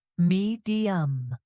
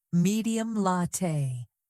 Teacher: The word medium has a gentle rise in the first syllable, then a soft ending.